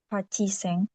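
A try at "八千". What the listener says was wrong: oke, haseng, iya, dilebur. Oke, dilebur jadi bukan Haciseng tapi Haseng.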